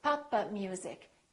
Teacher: So when we release the stop, it sounds like we're adding an extra syllable.